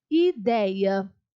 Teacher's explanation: O dei é a sílaba tônica. Então, dei também é paroxítona.